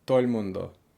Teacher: Or you'll hear things like if for saying everybody, todo el mundo, you'll hear somebody say todo el mundo. So they'll cut out the D and squish the whole chunk together so that it sounds like one word